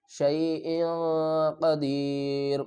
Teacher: اخفا ہو رہا ہے، کیونکہ تنوین کے بعد قاف آ رہا ہے